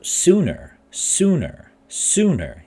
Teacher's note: You hear the ooh, ooh, ooh, sooner. The first syllable is heavy because it contains a long vowel.